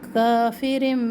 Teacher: کافر یہاں پر ہے اقلاب تنوین کے بعد با ہے تو ہم یہاں پہ تنوین کی آواز کو میم میں بدل رہے ہیں. ایک الف کے مقدار اس کی آواز ہو.